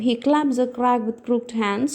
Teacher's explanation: you find a weak strong pattern throughout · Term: iambic tetrameter